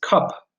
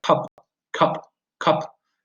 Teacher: it's a big sound and it stressed but it's not tense and it's not rounded if it were rounded we would be speaking about words such